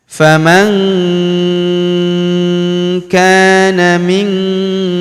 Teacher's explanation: Dengungnya kita tahan dua sampai 3 harakat. Famanana huruf ka kita panjangkan dua harakat karena terdapat alif di depannya.